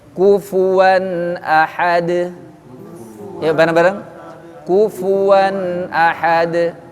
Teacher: jadi bibir bawah kena gigi atas